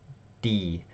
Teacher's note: It's right kind of behind your top teeth.